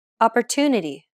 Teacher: The stressed syllable to in opportunity is pronounced longer than all the other syllables. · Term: stress-timed language